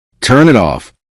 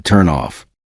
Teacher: The final sound of turn connects directly to it, and the final sound of it connects with off. Instead of hearing 3 separate boxes, you hear one smooth stream.